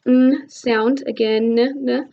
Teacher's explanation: this is going to be created by pressing our tongue up to our hard palate and then closing off all that airflow out your oral cavity. So all our air is going to come out of our nasal cavity.